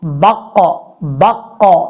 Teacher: قاف دو نقطوں والا جب ساکن اس کو پڑھتے ہوئے باؤنس آنا چاہیے آواز میں، یعنی آواز کو آپ نے ہلانا ہے۔ · مثال کے طور پہ ہم شروع میں با لگا دیتے ہیں، قاف جو ہے وہ ساکن ہے، با قاف زبر بق، یا آپ اس کو ایسے بھی پڑھ سکتے ہیں، با زبر قاف بق بق۔ یہ جو ق کی آواز آ رہی ہے یہ اصل میں ہے قلقلہ